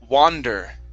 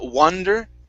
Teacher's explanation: Okay, instead of wonder, okay, it's going to be more of an ah sound. So open up your mouth and it's more ah.